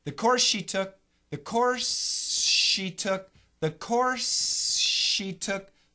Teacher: It's like 99% SH and only 1% S. So the simple answer, you really put them together, focus on the second sound. · So a little bit of S and a lot of SH.